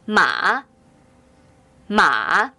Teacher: a tick which goes down first then goes up when pronouncing the third home drop your chin first then move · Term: falling rising tone